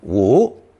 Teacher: both versions are pronounced second tone woo